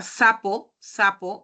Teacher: La S si es alveolar, va la lengua hacia la zona alveolar.